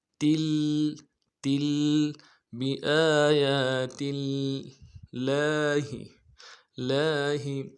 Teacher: اس کو بھی ایک الف دال میں کھینچیں گے، بی آیا تا کو لفظ اللہ کے لام کے ساتھ ملانا ہے، تشدید ہے، زور دیں گے